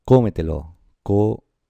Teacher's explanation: la sílaba tónica, es la anterior a la antepenúltima. Es decir, la antes de la antepenúltima. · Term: sobredrújulas